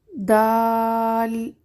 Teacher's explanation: دال زبان کی نوک جب اوپر والے 2 دانتوں کی جڑ سے لگے تو ادا ہوتا ہے۔ دال بھی سخت اور باریک حرف ہے۔